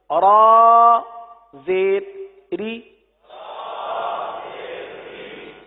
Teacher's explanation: را کے نیچے زیر آ جائے تو را کو باریک پڑھتے ہیں